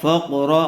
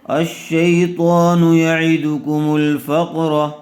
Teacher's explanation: پیش مل، یعیدکم الفا، قاف زبر فق، را زبر را، فقرا، قاف کو بھی پر کریں گے اور را کو بھی پر کر کے پڑھیں گے